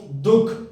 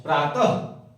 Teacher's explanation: विसर्ग हमेशा कंठ से उच्चारित होता है